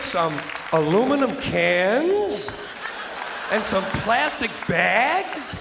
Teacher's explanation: his neutral tone becomes a whine dragging out the a sound in bags and cans to make them sound small and silly